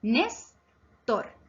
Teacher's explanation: Es grave porque su acento está en la penúltima sílaba nes.